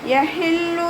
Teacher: ഹ എന്നുള്ള അക്ഷരത്തിൻ്റെ സൗണ്ടിനെ തൊണ്ടയുടെ മധ്യഭാഗത്തു നിന്ന് തന്നെ കൊണ്ടുവരാം